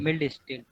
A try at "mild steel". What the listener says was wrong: Milled. It is not milled. You should pronounce it as a mild steel.